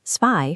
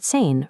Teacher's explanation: Take the numbers 2 and 10. In German, the letter Z always makes a sharp t sound, like the end of the English word cats.